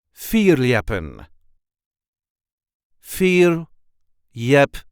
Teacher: the L is barely audible